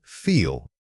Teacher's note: When you say feel, consciously exaggerate the length of that e sound. It should feel like a sustained note coming from your throat.